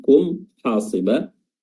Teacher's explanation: mimnya di sini izhar jelas, dibaca jelas ya, tanpa ikhfa, tanpa samar-samar, tanpa idgham